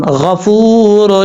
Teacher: اب اس کے بعد ہے فا، واو پیش فو، را، دو پیش رون، غفور، فا کے بعد جو واو ہے یہ واو مدہ ہے، ایک الف کی مقدار اس کو لمبا کر کے پڑھیں گے۔ یہاں پر را کے اوپر دو پیش ہیں، آگے بھی را ہے، را کے اوپر دو پیش ہیں اور آگے را آ رہا ہے، را کو، دو پیش والی را کو اس را کے ساتھ کنیکٹ کرنا ہے۔